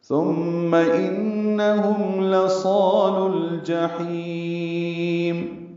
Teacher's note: لام کے بعد واو الف الف نہیں پڑھیں گے، لام ساکن پہ اظہار قمری ہوگا جیم کی وجہ سے، جیم کو جلدی پڑھنا ہے، ہا وسط حلق سے ادا کرنا ہے، اس کو لمبا کرنا ہے، میم ساکن پہ اظہار شفوی ہے وقفن۔